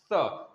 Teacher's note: स, दांत में टच होना चाहिए यह स बोलने में, छोटा वाला स बोलने में दांत में हमारा जीभ जो है टच होना चाहिए